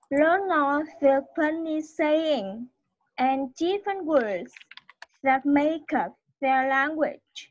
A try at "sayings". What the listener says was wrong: Sayings, em bị thiếu âm Z. Không, ý thiếu âm Z phía sau.